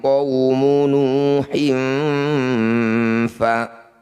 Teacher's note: Kadzabat qablahum qaumu nuhin fa, kasrah tanwin bertemu fa, disebut bacaan ikhfa, namanya ikhfa awsat. Bunyi kasrah tanwinnya dengungkan 2 harokat. Ketika dengung lisan kita sudah bersiap membunyikan fa. · bunyi kasr tanwinnya dengungkan dua harakat ketika dengung lisan kita sudah bersiap membunyikan Fa qumu nuhin fakadzabu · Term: ikhfa ausat